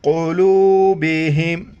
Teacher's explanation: بڑی قوف ہے موٹا کر کے پڑھنا ہے